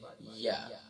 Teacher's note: یا جو ہے وسط زبان وسط تالو سے ادا ہوتا ہے